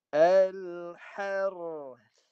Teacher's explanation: Habiskan roh, lepas habis bunyi roh, bunyi sa saja. Jangan ada bunyi yang diseret daripada roh tu masuk ke urut sa.